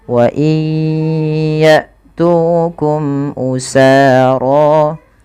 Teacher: Wa iya, masukkan bunyi nun kepada huruf ya karena dia ada idgham bi gunnah, yaitu terjadi ketika ada nun sukun bertemu dengan huruf ya, maka masukkan nunnya kepada huruf ya dan ditahan